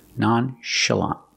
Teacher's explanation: And remember the pronunciation. The CH makes a soft sh sound.